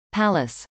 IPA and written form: pˈæləs (palace)